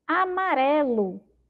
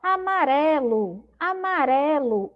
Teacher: Com a sílaba mais forte, pró, amarelo. Amarelo, a sílaba mais forte é o ré, certo?